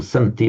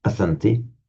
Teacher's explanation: the vowel drops off in the third person plural